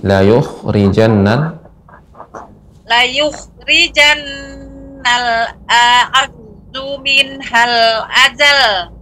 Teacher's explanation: jadi antara a itu berbeda. Yang pertama a hamzah, yang kedua ain